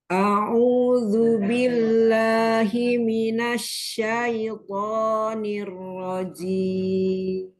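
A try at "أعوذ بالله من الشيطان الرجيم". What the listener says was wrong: Harokat fathahnya jangan hamzahnya jangan tipis, jangan tebel banget. Coba dorong, Nah, ini bisa. Kemudian domahnya. Kurang monyong. A'udzu. Ya, nanti latihan fathah yang A ya, ya.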